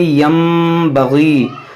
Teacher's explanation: کیونکہ نون ساکن کے بعد حرف با ہے, تو یہاں پر ہوگا اقلاب